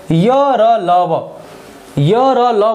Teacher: य र ल व जो अंतस्थ हैं ये भी सघोष होते हैं